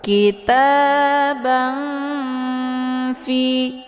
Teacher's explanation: cara bacanya tanwinnya disamarkan kemudian siap-siap menuju ke huruf Fa kitaban Fi ya hukum bacaan ikhfa ausad dibacanya juga sambil didengungkan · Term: Ikhfa ausat